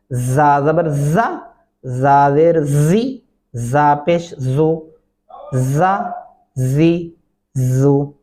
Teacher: ये जा सख्ती से अदा होता है जहां से सीन अदा हो रहा है और इसको भी दांत बंद करके पढ़ेंगे ज जबर